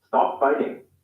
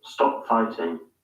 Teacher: Referred to as received pronunciation, T sounds are pronounced as hard T's, in other words, voiceless T sounds. In the US, they sometimes sound like an alveolar tap instead of T, an alveolar stop. This normally occurs in an unstressed syllable between two vowel sounds, or between a vowel and a rhotic sound, like an R sound.